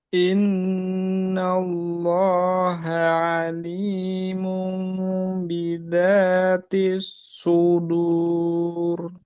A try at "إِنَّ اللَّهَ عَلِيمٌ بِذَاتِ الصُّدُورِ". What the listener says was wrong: Oke, koreksinya hanya pada za, bukan bidati tapi bizati. Ya, kurang celah.